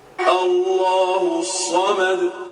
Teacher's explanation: تو یہاں بھی جب آپ آیت پر رکیں گے تو پیش کے بجائے یہ ساکن ہو جائے گا دال اور قلقلے کے ساتھ پڑھا جائے گا